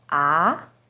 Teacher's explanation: starts with a little lower pitch and goes up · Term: second tone